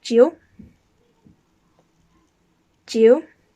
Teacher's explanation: Number 9 is pronounced Jiu, and it's in third tone so it goes down and then up